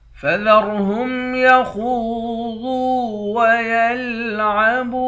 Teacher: را کو موٹا پڑھیں گے، خا کو بھی موٹا پڑھیں گے اور ضاد کو بھی موٹا پڑھیں گے۔ خا کے بعد واو ہے، واو حروف مدہ ہے، ایک الف کے مقدار کھینچیں گے۔